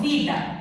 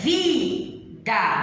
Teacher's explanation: A sílaba vi é a sílaba tônica, ou seja, a sílaba mais forte na pronúncia.